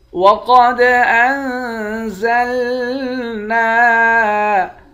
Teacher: قاف کو موٹا پڑھیں گے، دال پر قلقلہ کریں گے، نون پر اخفا کریں گے۔